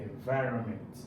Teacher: where is the stress on environment? Is on vi. And vi, this is where the stress is.